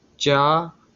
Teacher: चा आपका तालु व्यंजन होता है